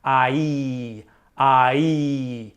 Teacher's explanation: So the ah is down low, and then when you move up into the E, you can feel your tongue go up high in your mouth and towards the front. So you want to go up and towards the front.